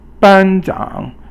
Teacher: first tone, which is a flat tone that's high, and then the third tone, which is a falling and a rising tone